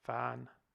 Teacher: with an alveolar final nasal. And the only way we could get this to work in the whole system is to hypothesize an original labial nasal that delabializes and turns into N in the presence of this F that's at the start of the word.